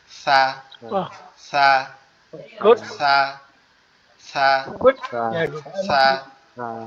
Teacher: সা যে হরফটা আছে এটার উচ্চারণের স্থান হচ্ছে আমাদের জিহ্বার আগা, এটা সামনের দুই দাঁতের আগার সাথে লাগবে, সামনের দুই দাঁতের আগার সাথে লাগবে, লেগে হালকা নরম আওয়াজ হবে সা সা সা সা সা, এভাবে।